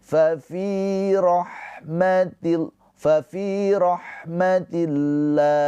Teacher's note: Lafaz Allahnya dibaca dengan panjang boleh dua boleh empat boleh enam harakat karena kita berhenti di sini